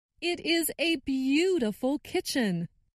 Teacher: And I noticed that stressed the word beautiful.